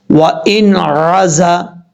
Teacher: اب یہاں پر نون ساکن کے بعد عین آ رہا ہے حروف حلقی میں سے، تو یہاں نون کو چھپائیں گے نہیں، نون کو ظاہر کر کے پڑھیں گے · زا حروف صفیریہ میں سے سیٹی کے ساتھ پڑھا جائے گا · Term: اظہار حلقی